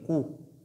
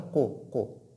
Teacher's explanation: Ici, la lettre Qaf porte ce qu'on appelle Dhamma. Donc la voyelle courte Dhamma, et qui nécessite ici un prolongement des lèvres. Donc nous devons dire Kou et non Ko, mais plutôt Kou.